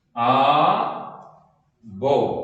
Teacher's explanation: ആദ്യത്തേത് ഉൾപ്പെടെ എല്ലാ സ്വരങ്ങളും ദീർഘമായും അവസാനത്തെ സ്വരം മാത്രം ഹൃസ്വമായും ഉച്ചരിക്കുന്നു